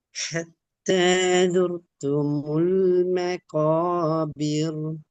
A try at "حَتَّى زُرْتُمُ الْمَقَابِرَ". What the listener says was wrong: மக்கா போதாது, இன்னும் தொண்டை கீழுக்கு போகணும். مقا. مقا.